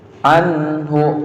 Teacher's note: Nun mati ya, dibaca idhar ya, idhar. Anhu, nggak boleh dibaca ang, salah ya.